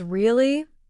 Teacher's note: if someone says really with a rising tone, it means surprise or curiosity.